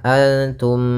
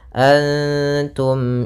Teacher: cara membacanya adalah suara mimnya tidak boleh ditahan Antum tidak boleh seperti itu tapi jelas Antum a pada lafal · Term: izhar syafawi